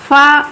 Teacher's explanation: फा ये भी दव्योष्ट, स्पर्श, आघोष और महाप्राण है।